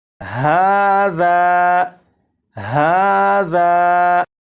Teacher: اب یہاں پر دیکھیں یہ ہے الف، الف سے پہلے زبر ہے، اور آپ کو معلوم ہے الف سے پہلے زبر ہو تو الف مدہ ہوگا، اور الف مدہ کو ایک الف کے برابر کھینچ کے پڑھتے ہیں، اور اس لفظ کو پڑھیں گے ہاذا، ہاذا، تو ذال کو ایک الف کے برابر جو کھینچ کر پڑھا گیا ذا، اور اس میں یہ جو آواز ہے ذا، آ، یہ الف مدہ ہے اور اپنے مخرج سے الف ادا ہو رہا ہے۔